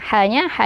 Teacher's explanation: ha yang keluar dari tengah tenggorokan alirkan suara dan nafasnya